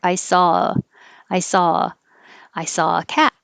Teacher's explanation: the a changes to uh